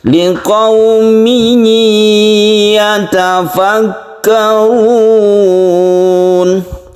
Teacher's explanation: tekankan ke ya, bukan panjang memnya saja, bukan hanya panjang biasa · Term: tasydid dengan dengung